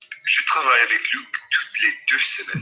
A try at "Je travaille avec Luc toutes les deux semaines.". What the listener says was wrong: Good, now, lovely.